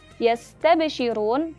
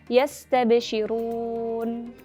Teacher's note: huruf nun bersukun dibaca lebih singkat dibandingkan dengan huruf sin bersukun yang memiliki sifat rokhawah. Jadi yastabshirun, seperti itu.